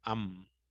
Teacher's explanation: Ámbar también es una palabra que tiene dos sílabas, la mayor fuerza de voz está en am